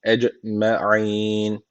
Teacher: Ecmein deyip durduk. En sonunda da meddi arız tecviti var. Bir elif uzatarak duruyoruz.